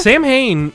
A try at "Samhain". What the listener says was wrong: Samhain. I don't think you pronounce it like Sam Hain. Like, hi, I'm Sam Hain. I'm your plumber. I think it's like it's like Samhain, because I think it's like Irish, isn't it?